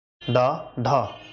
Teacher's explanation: और इसे अगर आप उच्चारित कर रहे हैं ठीक, तो जैसे ही आप कहेंगे ढा ढा अड़ा, डा ढड़ा, डा ढड़ा, ठीक। तो आपकी जो जीभ है ऊपर जाके टकरा के वापस आएगी, ठीक है, लगभग मुड़ जाएगी, ठीक है। तो उत्क्षिप्त व्यंजन इसलिए इन्हें कहा जाता है, ठीक।